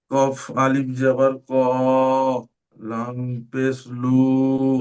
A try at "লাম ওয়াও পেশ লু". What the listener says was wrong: লাম পেশ লু নয়, লাম ওয়াও পেশ লু।